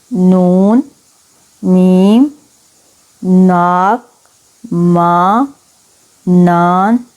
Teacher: وہ آوازیں جن کو ادا کرتے وقت ہوا ناک سے نکلے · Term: انفی مصمتیں